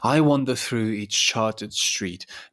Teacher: going unstressed, stressed for 4 times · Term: tetrameter